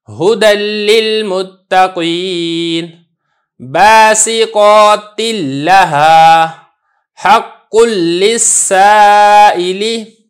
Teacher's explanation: تنوین بالکل پڑھنے میں نہیں آ رہی، نون ساکن بالکل پڑھنے میں ہی نہیں آ رہا ہے